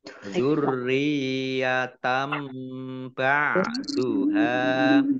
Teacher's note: fathah tanwin bertemu dengan huruf ba, bacaan iklab. Baknya dibaca mim terlebih dahulu. Dzurriyatam ba'duha, ditandai dengan mim kecil berdiri.